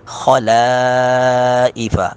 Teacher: خو کو پر کر کے پڑھیں گے، لا کو باریک پڑھیں گے ، خلائف، لا کو اپنی حالت پہ پڑھیں گے، خلائف، غین